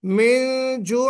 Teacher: من جوع میں، من میں یہاں پہ غنہ کرنا تھا، یعنی اخفا آپ نے نہیں کیا